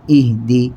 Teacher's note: ہا کی آواز لوٹ کر نہیں نکلے گی چونکہ ہا ساکن قلقلے کا حرف نہیں ہے